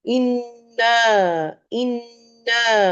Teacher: اِنَّا نون کا غنہ ہوگا. اکمل غنہ اس کو کہیں گے، یعنی کہ میکسیمم ٹائم آپ دیں گے اس غنہ کو